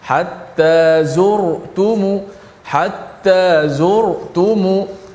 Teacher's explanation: Ra yang kedua hatta zur, itu pun tebal juga. Ra mati sebelum dia berbaris di hadapan sentiasa tebal sokmo. Hatta zurtumu, hatta zurtumu dibaca tebal.